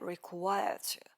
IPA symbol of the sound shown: tə